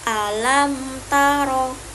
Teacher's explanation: ada mim mati bertemu dengan huruf ta, maka dibaca jelas 2 harokat. Nah, hukum bacaan itu termaksud ke izhar syafawi.